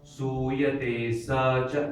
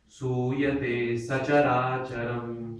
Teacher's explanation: no pausing after the sa, because sa is a short syllable. Suyate sacha, not like that.